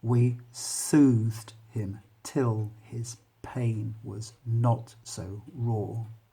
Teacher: So you've got an iambic pentameter, which is offbeat, onbeat, offbeat, onbeat